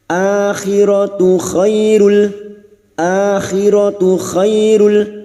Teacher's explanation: khay fathah bertemu ya sukun kita lunakkan